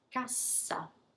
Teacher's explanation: How do I double an S? I linger once more, I protract that sound. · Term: double S